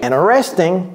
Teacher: Dans interesting, il n'y a pas de T.